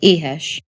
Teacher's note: basically just a really breathy vowel sound or a really really sloppy indistinct h